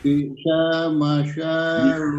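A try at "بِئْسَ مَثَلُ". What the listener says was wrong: Bisa, soalnya dibaca pendek. Sinnya dibaca pendek. Bisa, sinnya dibaca pendek. Bi'sa mathalul qaumil ladzina kadzabu bi ayatillah.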